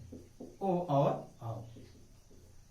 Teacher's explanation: ये कंठ और ओष्ठ दोनों की सहायता से उच्चारित होते हैं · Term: कंठोष्ठ